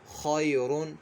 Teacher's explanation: جب ہم وقف نہیں کریں گے یعنی دو پیش پڑھیں گے تو را کو پر پڑھیں گے ، خیرون، را کو ہم نے اس وقت پر پڑھنا ہے،